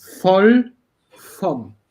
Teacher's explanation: You have two consonants after the O, so you have short and open version. Voll, not voll.